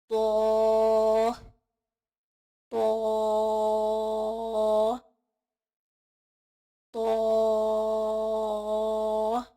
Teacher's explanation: زبان کی نوک جب سامنے کے دانتوں کی جڑ سے لگے تو ادا ہوتا ہے. تو کو ادا کرتے ہوئے ہم آواز جو ہے وہ ناک میں نہیں لے کے جائیں گے، جیسے تو تو تو.